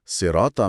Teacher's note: सिराता में साद की वजह से अलिफ मोटा है